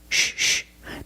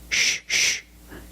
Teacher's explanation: the c is pronounced with the sh sound like in fish or wish sh sh there's no voice it's a soft sound